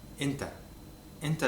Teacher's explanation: you have a stop and then the vocal cords begin to vibrate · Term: Hamza